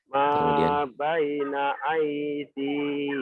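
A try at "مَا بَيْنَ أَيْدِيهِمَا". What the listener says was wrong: Pendek hi-nya, yo. Ma baina aydihima.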